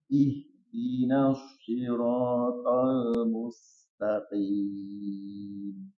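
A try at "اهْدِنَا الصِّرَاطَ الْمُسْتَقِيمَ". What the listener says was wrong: Tapi harus tafkhim. Ihdinas.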